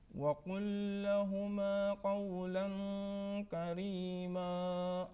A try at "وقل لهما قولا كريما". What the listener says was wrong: Light nasal sound. Ikhfa demands a light nasal sound, not full nasal sound. Light nasal sound.